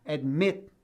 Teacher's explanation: o stress, a força da pronúncia, está na segunda sílaba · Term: sílaba tônica